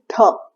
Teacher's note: यह भी एक एस्पिरेटेड लेटर है। यानी जब आप इसको बोलेंगे तो आपको एक एयर फील होगी। ध हवा का झोंका आया ना? · टंग दांत के पास जाएगी और फोर्स के साथ हम बोलेंगे ध